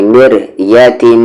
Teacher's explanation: میم پر یہاں تشدید ہے، غنے کے ساتھ پڑھیں گے، یعنی مر یتیم. آواز کو ناک میں تھوڑی دیر رکھیں گے